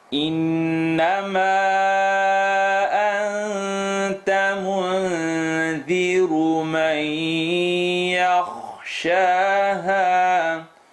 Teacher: We end here with noon shadda, full nasal sound.